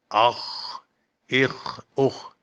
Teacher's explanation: خا خراش نہ گلے میں آئے، ہا بھی نہ بنے